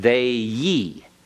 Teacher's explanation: our jaw constricts slightly, comes closer when we get to the end, as though we were going to start to say you. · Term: diphthong